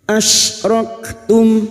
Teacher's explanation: mim sukun dibaca jelas tanpa dengung · huruf Kaf sukun yang memiliki sifat syidah dan hams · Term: izhar syafawi